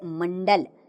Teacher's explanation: अनुस्वार का उच्चारण नाक से होता है